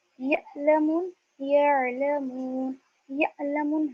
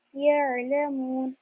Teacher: اور عین کی آواز کیسی ہونی چاہیے, نرم ہوگی عین کی آواز, اور عین کی آواز میں جھٹکا بالکل بھی نہیں ہوگا